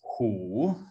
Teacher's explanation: So in today's Mandarin Chinese, it's hu in the third tone.